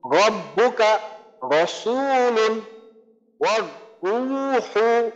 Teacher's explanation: তো আমাদের এখানে করতে হবে যে রয়ের মাখরাজকে ঠিক রেখে শুধু আমাদের মোটা করার ক্ষেত্রে জিব্বাটাকে উপরের দিকে তুলতে হবে